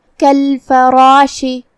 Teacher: شین کی ادائیگی زبان اور اوپر کے تالوں کے درمیان سے ہے، ہم شین کو وہیں سے پڑھیں گے اور اسے زیر سے ادا کرنا ہے. · را کو اور مد الف کو دونوں کو تفخیم سے ادا کرنا ہے